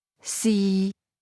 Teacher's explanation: Fourth tone, mid falling